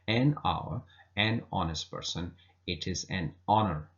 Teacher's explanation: An honest person, you don't say honest person. So honest is more like an O sound, so H is almost silent